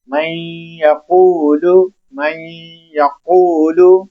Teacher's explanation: ہم اپنی زبان کا جو سرا ہے اس کو اوپر والے تالو سے لگائیں گے اور آواز کو ناک میں چڑھائیں گے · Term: غنہ